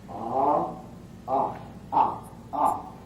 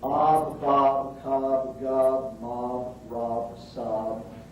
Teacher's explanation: the short O is pronounced ah